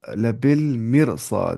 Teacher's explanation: ہمیں پڑھنا ہے اس را کو موٹی آواز سے